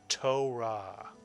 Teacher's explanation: Israelis tend to roll the r not quite like the French do